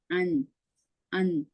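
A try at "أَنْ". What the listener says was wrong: அன் அல்ல, என் என். எஸ், நோமலாக நீங்க நாக்குல எந்த விதமான அசைவும் இல்லாம உச்சரிச்சா சரி. என் என். என்.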